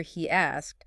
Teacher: It's not a strong yi, just a little glide.